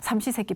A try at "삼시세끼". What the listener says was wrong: 발음을 좀 잘해요. 3번의 식사지 삼식세끼?